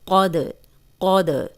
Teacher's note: قوف موٹا ہے اور دال قلقلہ ہے تو ہلا کے پڑھیں گے، اور قوف کو موٹا پڑھیں گے، قود، قود۔